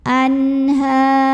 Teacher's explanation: Berikutnya di sini ada hukum izhar halqi karena ada nun sukun yang menghadapi huruf halqi atau huruf tenggorokan yaitu ha. Maka nun sukun dibunyikan dengan izhar atau jelas. Anhar. Jika berhenti di sini, maka di sini ada hukum mad arid li sukun.